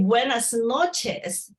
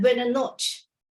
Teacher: they cut off the S and the last part of the syllable